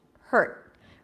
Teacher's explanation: So for the word hurt, as in you hurt my feelings, I bring the tip of the tongue up and I block the air immediately.